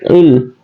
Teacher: Kalau lam mati itu dia adalah lam adalah khafatul lisan, jadi il ya, il. Jadi lang itu lidah kita menepi ke sebelah kanan luar atau sebelah kiri luar boleh. Yang jelasnya dia tepi lidah, ya, lam ya, ilma lana, jadi nempel ke pinggir lidah kita bagian luar.